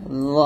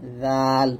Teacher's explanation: জ হবে মোটা এবং জাল হবে চিকন বা পাতলা। দুটো মাখরাজ একই, জিহ্বার আগা সামনের উপরে দুই দাঁতের আগার সঙ্গেই লাগবে।